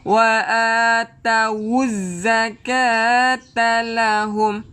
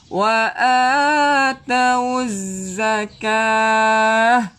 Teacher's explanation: Wa atawuz zakata lahum. Kalau kita teruskan baru bunyi tak. Kalau kita berhenti bunyi ha. wa atawuz zakah. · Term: tak marbutah